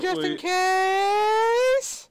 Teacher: Instead of the entire thing being a rising tone, the entire sentence is monotonous up until the final word, where then it goes into the rising tone.